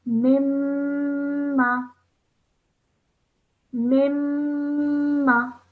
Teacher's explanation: I'm holding that meme sound in my nose for around 2 seconds before I apply the fatha sound. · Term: meme gunna